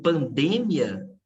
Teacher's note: O A vai ser a vogal, o I vai ser semivogal.